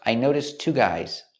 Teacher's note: Noticed links to the next T sound in two.